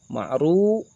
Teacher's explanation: Nah, ini pun sama berharokat dhammah. Ma'ru, ru adalah ro yang berharokat dhammah maka disebut ro tafhim. Dibaca tebal.